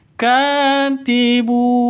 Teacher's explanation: tanwin bertemu dengan wau masuk ke wau cara bacanya disertai dengung dua ketukan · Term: idgham bighhunah